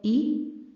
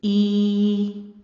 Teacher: حمزہ کھڑی زیر ای، نرمی سے آپ نے دو زیر کے برابر آواز کو کھینچنا ہے۔ بڑی زیر کی آواز ہے ای، اور کھڑی زیر کی آواز ڈبل ہو جائے گی